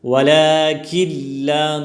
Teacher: ولكن لا، نون بالکل نہیں پڑھی جائے گی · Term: ادغام تام